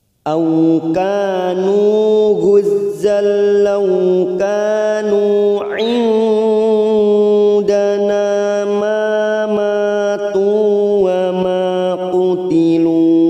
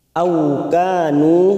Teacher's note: kanu masing-masing dua harokat kita panjangkan. Ka fathah diikuti alif, nu duma bertemu waw sukun.